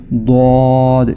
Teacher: یہ جو ضاد کی آواز ہے یہ آواز کو زبان کے دائیں اور بائیں کنارے کو موڑ کر دانتوں کے درمیان سے پیدا کی جاتی ہے